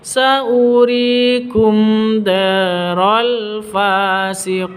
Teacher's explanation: mim mati bertemu dengan dal, jelas terang karena izhar safawi, tidak boleh didengungkan.